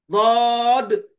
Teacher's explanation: بازوئے زبان کا کنارہ اور اوپر کے سیدھے یا بائیں داڑھوں سے ایک حرف ضاد نکلتا ہے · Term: ضرسی